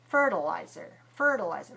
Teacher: fertilizer stressed on the first syllable. So the second syllable is also weak.